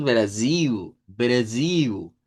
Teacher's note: Cuando decimos Brasil con acento portugués de Brasil decimos Brasil. Brasil. Cambiamos la L por U.